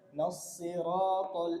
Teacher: এই রটা মোটা হবে